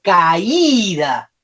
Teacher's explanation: Le pongo toda la fuerza a la I.